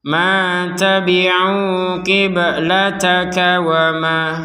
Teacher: wa ma kita baca 2 harokat. Panjangnya 2 harokat untuk ma-nya ini.